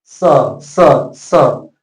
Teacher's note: दंती स जब बोलेंगे तो आपका जीव हमेशा दांत में सटना चाहिए